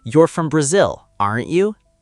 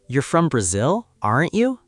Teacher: If my voice goes up, I am really asking. I don't know the answer. I'm surprised or curious. · If my voice goes down on the tag, I am confirming something I believe is true.